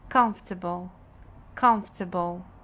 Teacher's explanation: Então, aqui nós temos 1, 2, 3 schwa sound em apenas uma palavra, ok? Então, nós temos uma sílaba tônica, mas nós podemos ter várias sílabas átonas, que é o caso dessa palavra. · as vogais dessas sílabas, as sílabas átonas, vão ser reduzidas ao schwa sound